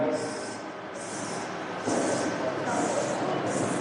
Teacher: tajamnya suara karena ia keluar dari celah yang sempit antara ujung lidah dan kedua gigi seri. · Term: shofir